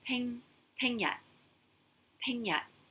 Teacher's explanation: high tone again, high falling for peng yat.